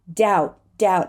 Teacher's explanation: I don't even have to say the T it's not silent it is a held T